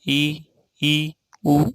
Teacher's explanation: तो मुख बिल्कुल कम खुलता है संवृत में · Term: संवृत स्वर